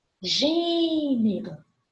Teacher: Gênero é uma proparoxítona. Proparoxítona, a antepenúltima sílaba tônica.